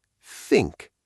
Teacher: And for the voiceless th, you turn your voice off. It's just air, like a soft wind.